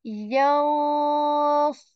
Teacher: Hiding, because if this sad letter after noon sakin and saying yansu, I'm not saying yansu. I'm hiding this noon sound and saying yansurukum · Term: ikhfa